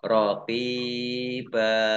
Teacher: kalau wakof dibacanya fathah panjang 2 harokat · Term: mat iwad